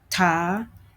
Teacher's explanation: it is a low back vowel with a high tone · The syllable type is CV, and the syllable is also closed with a glottal stop.